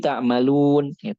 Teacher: dammah diucapkan 'u', bukan 'o', bukan "talun", tetapi "ta'lamun", dan juga durasinya, karena jika fathah, dammah, atau kasrah diucapkan terlalu lama, akan jadi apa?